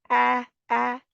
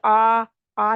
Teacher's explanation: बारीक लेटर है smiley face होगा आपका मुंह जैसे मुस्कराहट होती है इस तरह होगा